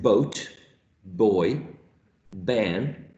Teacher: it is definitely a stop sound because the airflow is stopped by the 2 lips put together, right? As when we say p, right? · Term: bilabial stop